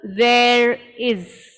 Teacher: if the next word begins with the vowel then we do pronounce the r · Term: linking r